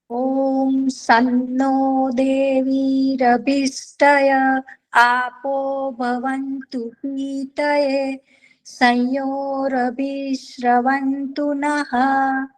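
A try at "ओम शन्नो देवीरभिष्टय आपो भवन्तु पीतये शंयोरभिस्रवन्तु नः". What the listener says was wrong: 2-3 अशुद्धियां हो गई हैं। एक तो स बोला जा रहा है, श नहीं बोल रहे आप। शन्नो, श बोलना होता है, ठीक है। शन्नो,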